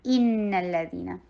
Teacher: حمزہ کو اسٹرانگ آواز کرنی ہے اور نون کے اوپر گنا کرنا ہے۔ ان، you have to stop for a while, ان، اور پھر نون کو لام کے ساتھ ملائیے اور لام کے اوپر تھوڑا ٹائم دینا ہے۔